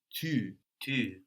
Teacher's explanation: We point our lips out there when we make that U. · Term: U sound